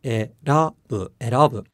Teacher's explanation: native English speakers can pick up on the low, high, low pattern in to choose